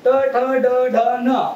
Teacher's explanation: मग ट ट ड ड न म्हणताना आपल्या जिभेचा टोक कुठे गेला वरती जाऊन भिडलेला आहे · वर्णाचे उच्चार स्थान मूर्धेला जाऊन आपली जीभ भिडेल आणि मग ते वर्ण उच्चारले जातात. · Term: मूर्धन्य वर्ण